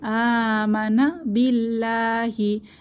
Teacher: আমানা আতে এক আলিফ টান হবে খাড়া জবর আছে আমানা বিল্লাহি এখানে আল্লাহর লাম পাতলা করে পড়তে হবে এক আলিফ টেনে খাড়া জবর আছে তাই এক আলিফ টেনে পড়বো